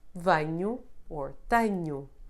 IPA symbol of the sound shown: ɐ